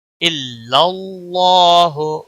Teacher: اللہ کے لام کو موٹا پڑھیں گے اور اس کے اوپر کھڑی زبر بھی ہے، 1 الف کے برابر کھینچ کر پڑھیں گے.